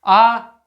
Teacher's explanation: आ बोलने में तो मुंह फैल रहा है, ओठ तो गोल हो नहीं रहे हैं